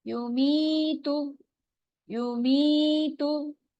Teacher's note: पेश के बाद होंठों को हमने गोल करना है, ठीक है? वाव और पेश के बाद होंठ गोल होते हैं।